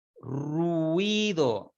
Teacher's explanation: En ruido la I se abre más que la U.